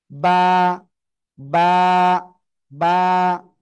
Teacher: দুই ঠোঁটের ভিজা অংশ থেকে। বা বা বা একালিফ টেনে উচ্চারণ করতে হবে।